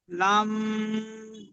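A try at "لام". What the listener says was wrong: জি, খেয়াল করেন, লাম বলে এখন মুখ বন্ধ করে নিও না।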